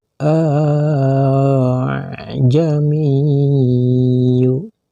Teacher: hamzah kedua dari kalimat tersebut tidak jelas dibaca fathahnya · dibaca panjang. Panjangnya satu alif atau sama dengan 2 harkat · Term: tashil